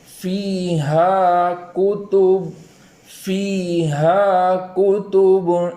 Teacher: یا مدہ کے اندر ایک الف کے برابر تاخیر کریں گے ، اور اس کے بعد والا حرف ہا ہے، حرف ہا،